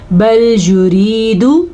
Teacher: یا ساکن ہے اور اس سے پہلے حرف نیچے زیر ہے تو یہ یا مدہ ہے، اسے ہم کھینچ کے پڑھیں گے